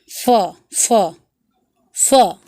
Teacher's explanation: दांत को होंठ पर रखकर कुछ हवा बाहर निकाला जाता है। दांत, दोनों होंठ के बीच में दांत को रखकर फ, फ, फ इस तरह का ध्वनि निकलता है। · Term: नुक्ता